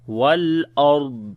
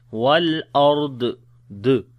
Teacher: make sure do not make qalqala on the dwad like wal ard d like that.